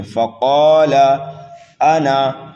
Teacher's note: قاف کو کھینچنا ہے لیکن قاف کو پر کر کے پڑھنا ہے، موٹا کر کے پڑھنا ہے